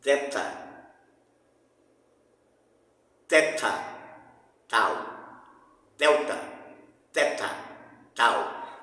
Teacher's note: Entre os dentes. O som explode, mas explode entre os dentes. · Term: oclusiva dental